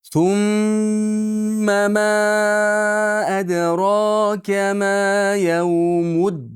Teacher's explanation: G'unnasi eng komil tarzda bo'ladi. Sum ushlab turing.